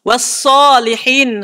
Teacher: huruf sod memang tebal, tapi tak perlu moncong bila baris atas.